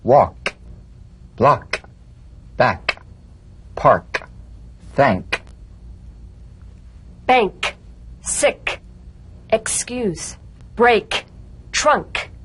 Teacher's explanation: the unvoiced tongue back plosive consonant with the tongue in the G position let the tongue spring · feel a crisp tap and a pulsation in the back of the tongue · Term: K drumbeat